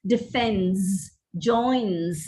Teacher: the plural realization is with a z sound